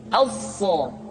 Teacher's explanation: Huruf sa sama seperti huruf sin dan huruf za, yaitu lidah berada di antara dua gigi seri. As-sa. Untuk memudahkan pengucapan huruf sa, Perhatikan sifat as-safir yang dimiliki oleh huruf sha, yaitu suara tambahan yang terdengar menyerupai dengan suara angsa.